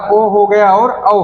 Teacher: दूसरा हमारा क्या है, कंठोष्ठ, ठीक है, कंठ और ओष्ठ, ठीक है, कंठ और ओष्ठ के संयोग से जिसका उच्चारण होता है उसको हम कंठोष्ठ बोलते हैं। जिसे हमारा ओ हो गया और औ हो गया, ठीक है, इसका उच्चारण हम करेंगे तो छोटा आ भी हमारा निकलेगा और छोटा ऊ निकलेगा हमारा उच्चारण में।